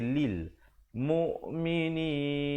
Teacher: Lam baris bawah bunyi li, bukan bunyi le. Jadi bila bertemu lam mati jadi lil mu'minin.